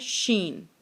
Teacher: और शीन की आवाज़ भी, ठीक है, शीन और जीम और या ये एक ही जगह से अदा होते हैं, ठीक है। यानी कि हमारी ज़ुबान का दरमियान वाला हिस्सा, और जब तालु को लगता है तो फिर लफ्ज़ अदा होता है शीन। आगे है जी स्वाद।